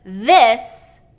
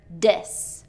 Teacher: hear the difference between that voiced TH sound and the D sound